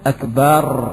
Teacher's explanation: Yang ke-16 menghilangkan hams pada al-kaf, dan ini banyak sekali terjadi sehingga ia ucapkan akbar, bukan ak, akan tapi akbar. · Yang ke-15 banyak menggetarkan ra sehingga ia ucapkan akbar, akbar, akbar.